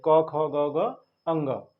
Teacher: तो कंठ से हम क वर्ग के जितने भी उच्चारण है क वर्ग के सभी वर्णों का उच्चारण कंठ से किया जाता है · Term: कंठ ध्वनियां